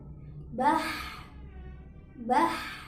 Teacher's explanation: ha ketika sukun juga sedikit diseret